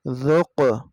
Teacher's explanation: تو یہاں پہ قاف کے اوپر جزم ہے، قلقلہ کر کے پڑھیں گے